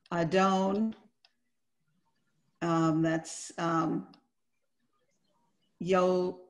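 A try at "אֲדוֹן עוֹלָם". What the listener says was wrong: There's no yo. Adon olam.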